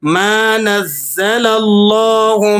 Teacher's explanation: یہاں لفظ اللہ سے پہلے والے حرف پر زبر ہے تو ہم نے یہاں موٹا کر کے اس کو پڑھنا ہے